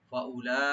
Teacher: লামে চার আলিফ টানবেন মধ্যে মুত্তাসিল, আর হামজাকে রাইট দিবেন এখানে।